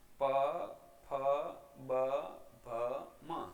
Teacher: પછી છે ઓષ્ઠ વ્યંજનો, એટલે કે હોઠ બંને ભેળા થઈ અને હવાને રોકે છે અને પછી હવા મુખવિવરમાંથી પસાર થાય અને જ્યારે જે વ્યંજનો ઉચ્ચારાય તે ઓષ્ઠ વ્યંજનો છે, જેમાં પ, ફ, બ, ભ, મ. આને ઉચ્ચારણ કરતી વખતે બંને હોઠ ભેળા કરવા ફરજિયાત છે